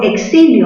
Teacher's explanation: mayor fuerza en la sílaba xi, grave terminada en vocal, no la tildas.